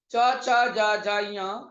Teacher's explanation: च छ ज झ ञ, ये 5 व्यंजन तालु से बोले जाने के कारण तालव्य वर्ण कहे जाते हैं। इस वर्ग का नाम है च वर्ग, ठीक है साथियों।